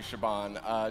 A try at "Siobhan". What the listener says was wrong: Siobhan, a B, not a B. It's spelt with a B, but it's pronounced with a V.